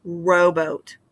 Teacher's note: the first syllable having that long O sound and the accented syllable there in the first, rowboat. And below, my chin dropped as I was saying that second syllable that in that word.